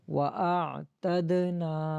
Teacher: دال کے ساتھ ملائیں گے یا قلقلہ بھی کریں گے، اور نون الف نا کو ایک الف کی مقدار کھینچیں گے